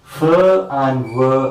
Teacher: the active articulator is lower lip and the passive articulator is upper teeth. We say f and v are labiodental fricatives.